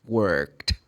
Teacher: you should pronounce the sound of ed for the verb work in the past like worked, because it's voiceless. You don't vibrate the vocal cords.